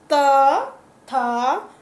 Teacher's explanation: ये दांतों की सहायता से बोले जाते हैं, दांतों पर जीभ स्पर्श करती है, इसलिए इनको दंते वर्ग कहा गया है।